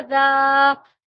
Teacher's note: دال الف زبر دا کو ہم ایک الف کے مقدار کھینچیں گے کیونکہ یہ حرف مدہ ہے